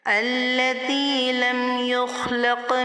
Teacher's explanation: خا کو پر کریں گے اور یہاں قاف پر قلقلہ صغرا ہوگا، قاف کو موٹا کر کے پر کر کے ادا کریں گے.